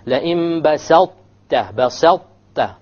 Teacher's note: you will give preference to the ta because it is the heavier of the two. Okay, even though this is the one coming first, but you'll give preference to this. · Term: idgham